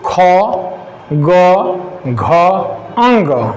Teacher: क थोड़ा आगे है, ख पीछे, ग और पीछे, घ और पीछे, अंग नाक से निकल आता है